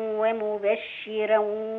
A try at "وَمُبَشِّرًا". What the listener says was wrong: بالراحة كده. ومبشرا الراء تفخم.